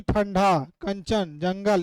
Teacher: अनुस्वार के उच्चारण में वायु नाक से निकलती है और उच्चारण झटके के साथ होता है।